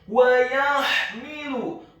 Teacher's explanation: Wa yahmilu, huruf wawunya dibaca fathah satu harokat, huruf ya-nya dibaca tipis fathah satu harokat, huruf h-nya dibaca sukun tarqiq nyaring dan halus. Kemudian huruf mimnya dibaca kasrah satu harokat, dan huruf lamnya dibaca tipis tarqiq dhammah, cukup satu harokat saja.